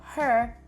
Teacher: a feature in African-American English in places like St Louis and Memphis called the near Square nurse merger